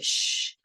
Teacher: And the difference between S and SH, for example, is S is kind of a fine hissing sound, and SH is more like a wind, shh, your tongue makes a tunnel